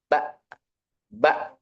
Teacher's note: Contoh kalau hamzah mati. Bak, bak itu pita suara menutup sehingga anginnya itu nggak keluar. Bak habis itu angin itu nggak keluar.